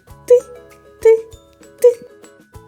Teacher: як стукає молоток ти ти ти коли ми вимовляємо звук ти губки злегка розтягнуті між зубками невеличка щілинка кінчик язика торкається верхніх зубів · звук т приголосний твердий глухий